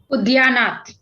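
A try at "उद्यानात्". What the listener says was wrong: Udyanat. I thought I heard Udyane. Udyanat.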